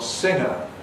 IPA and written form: ˈsɪŋə (singer)